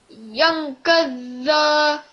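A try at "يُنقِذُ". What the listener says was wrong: Don't prolong that.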